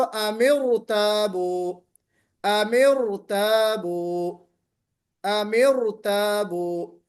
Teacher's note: اس را کو ہم موٹا پڑھیں گے